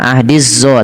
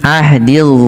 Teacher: Ujung lidah nempel dengan gigi dari atas.